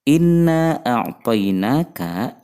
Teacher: dibaca panjang lima harokat karena terdapat tanda bacaan panjang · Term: Mad Jaiz munfasil